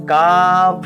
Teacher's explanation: জিহ্বার পশ্চাৎভাগ তালুর সাথে লাগাইয়া